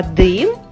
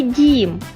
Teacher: слова дим і дім відрізняється лише одним звуком в слові дим звук д твердий ми його позначаємо рисочкою на схемі у слові дім звук дім